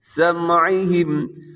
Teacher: یہاں حمزہ نہیں ہے، عین کی آواز ہو، سمعہم، وعلی ابصارہم غشاوہ، یہاں مد کیجیے گا، اسے مد جائز کہتے ہیں۔